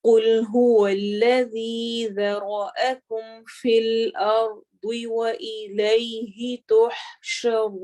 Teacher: الذی ذال کو نرمی سے پڑھنا ہے اور ذی کو لمبا کرنا ہے